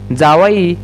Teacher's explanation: जावाई या शब्दातील ज हा वर्ण दंततालव्य आहे. दंततालव्य वर्ण पाहायच झालं तर त्याला च, छ, ज आणि ज याच्यामध्ये मोडतात.